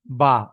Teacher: কিছু হরফ আছে দুই ঠোঁট থেকে হয়, যেমন বা, এই যে বা আমরা উচ্চারণ করি দুই ঠোঁট লাগতেছে